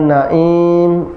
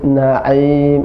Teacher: naim masuk ke hidung, naim, tapi na'im. Aim, na'im ya. Jadi a itu di tenggorokan.